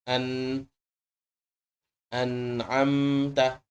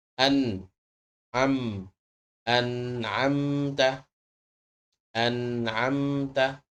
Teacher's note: hidung tapi hurufnya keluar dari bibit hurufnya sama seperti huruf nun hurufnya keluar dari lidah bertemu langit-langit akan tetapi untuk gunahnya tetap dari hidung